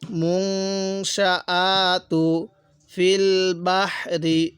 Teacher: মুং নাকের বাসি দ্বারা গুণনা করব